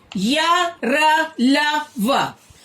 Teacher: अंतस्थ व्यंजन उच्चारण करते समय जीवा पूरी तरह से मुख के किसी भाग को नहीं छूती